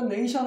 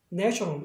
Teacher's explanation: 아까 명사 때는 네이라고 발음하지만 전미사에서 생긴 액센트는 단모음으로 한다. 그래서 얘도 네이가 아니라 이번엔 네가 되는 거예요.